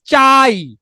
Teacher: আ কে চাইলেই আপনি কি করতে পারতেছেন, লম্বা করতে পারতেছেন, তাহলে আ হচ্ছে পূর্ণ স্বরধ্বনি, আর ই কে চাইলেই আপনি লম্বা করতে পারছেন না, ই হচ্ছে অর্ধ স্বরধ্বনি